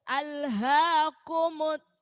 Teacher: Jadi dumma sempurnakan bunyinya u. Jangan sampai o.